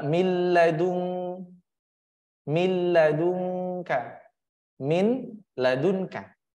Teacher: ladunka maka masuk ke huruf lam tidak boleh di Ee digunahkan tidak boleh dipanjangkan kenapa karena ia harus jelas pendek jelas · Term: idgham bila ghunah